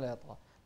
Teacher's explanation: ليطغى الطاء هني ننتبه لها، بعدها غين، فنوازن بين الطاء والغين في التفخيم